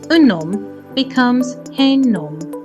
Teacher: The H is silent, so we can make liaisons. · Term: silent H